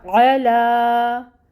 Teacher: عین کو آپ اس کے مخرج سے ادا کریں، وسط حلق سے نکالیں، اور اس کے اوپر بھی فتحہ کی حرکت ہے 1 کاؤنٹ، اور لا پہ کھڑی مد ہے تو 2 کاؤنٹس کے برابر پڑھیں گے، ٹھیک ہے۔